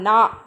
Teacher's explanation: ஓகேங்களா, நம்ம ப்ரொனவுன்ஸ் பண்ணுவோம் இல்லைங்களா, நா அப்படி ப்ரொனவுன்ஸ் பண்ணும்போது நாவின் நுனியானது மேல்வாய் அன்னத்தின் நடுப்பகுதியை தொடுவதால் இந்த நா உருவாகிறது